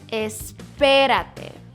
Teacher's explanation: Stress the P, the second syllable.